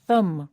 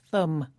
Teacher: That's thumb, spelt T-H-U-M-B. But we don't pronounce the final B. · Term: silent B